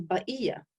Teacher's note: they didn't pronounce the qaf. They pronounced it as a glottal stop. So it was ba'iyya.